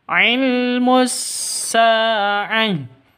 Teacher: Sa memiliki panjang dua ketukan karena alif yang didahului oleh fathah. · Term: Mad Thabi'i